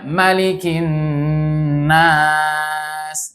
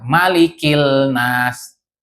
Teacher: dia alif lamnya tidak dibaca, bukan Malikil Nas.